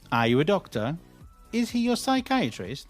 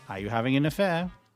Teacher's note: when you think the answer is going to be either yes or no, we generally use a rising intonation